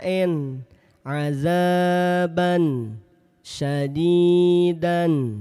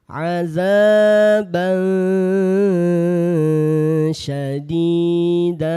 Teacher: Ini kan asalnya adzaban syadidan. Ketika dibaca samar maka tanwinnya tidak lagi jelas. Tanwinnya tidak lagi nampak bunyi n. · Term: ikhfa